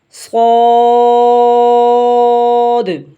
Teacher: سیٹی کی آواز بھی نکلے اور موٹا بھی ہو